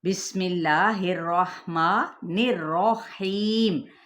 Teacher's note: را اپنی تشدید اور اس کے اوپر زبر کی وجہ سے یہ پر ادا کیا جائے گا، یعنی موٹا کر کے